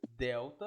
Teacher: você sente a língua batendo no dente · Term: dental